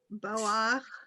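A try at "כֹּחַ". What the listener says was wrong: So it's ko. That's a kuf.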